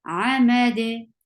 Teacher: You will simply give sukoon, and dal with sukoon will get sifa of qalqala. So you will make qalqala at the end.